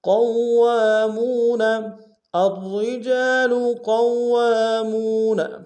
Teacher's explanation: قاف کو موٹا ادا کرتے ہوئے واو کے سامنے لائیں گے، واو کے اوپر تشدید زور دیں گے۔ واو کے ساتھ الف مدہ ہے، ایک انداز میں کھینچیں گے۔